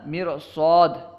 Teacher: اس مثال میں را کو پر پڑھنا صاد کی استعلاء کی وجہ سے